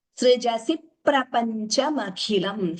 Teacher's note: Here dvitvam, the p is doubling, srijasi prapanchamakhilam.